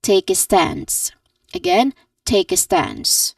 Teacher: take and stance are emphasized which means that we hold it a bit longer and say it a bit louder but we do not really try to really say it really really loud.